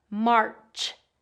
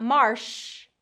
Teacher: So this one has that R vowel, R, and then the ch sound. So make sure it's a burst and not a continuous sound. So if it's a continuous sound, it's going to come out as shh.